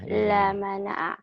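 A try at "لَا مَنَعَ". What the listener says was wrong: La-nya panjang. La mana'a.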